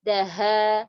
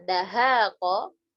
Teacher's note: Dal sama ha ini berjauhan. Dal di ujung lidah, ha di tenggorokan ya. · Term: mutaba'idan kabir